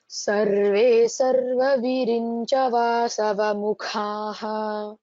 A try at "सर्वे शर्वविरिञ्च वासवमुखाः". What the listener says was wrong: The first is sa, the second is sha, Shiva. Sarve Sharva, tell again.